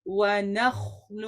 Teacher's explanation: make sure کہ آپ کا واو کا مخرج وی سے ادا نہ ہو · واو کا مخرج وی سے ادا نہ ہو، نہیں ہے، ونخل، نون آپ کا لائٹ ہے، لام بھی لائٹ ہے، خا آپ کا پر پڑا جائے گا